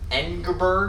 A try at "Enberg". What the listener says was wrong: No, the G may not be pronounced. Enberg.